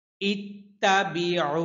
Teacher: তবে মনে মনে হামজার নিচে একটা জের ধরতে হবে আর আইন আইন হচ্ছে কণ্ঠনালীর মধ্যখান থেকে উচ্চারণ করতে হয়